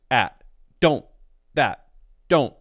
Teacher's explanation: When we can't change a T to a D, it will stop the voice either because it's at the beginning of the word or because it's at the end of a word and it is the stop T sound